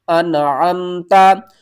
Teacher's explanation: تا، انعمتا، نون کو آپ نے ظاہر کر کے پڑھنا ہے، عین کو آپ نے حلق کے درمیان والے حصے سے ادا کرنا ہے ، اور عین کو میم کے ساتھ بھی ملانا ہے، انعمتا